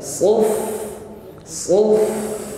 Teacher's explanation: sempurnakan sifat huruf Fa yaitu Hames ada nafas yang mengalir suf kedua rakhawah bunyi Fa juga mengalir suf suf angin dan